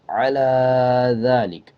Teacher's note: آگے دیکھیں عَلَى ذَلِكَ، عین کے اوپر زبر ہے، اس کے بعد لام ہے اور یہ کھڑا زبر لام کے اوپر ہے، یا کو سائلنٹ کر دینا، یا کو نہیں پڑھا جائے گا